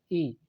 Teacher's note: ई, ये एक प्रकार का ह्रस्व स्वर है और इसका उच्चारण तालु से किया जाता है